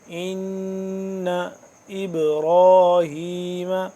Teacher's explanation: ان نون مشدد ہے تو اس پہ ہم کیا کریں گے؟ غنہ کریں گے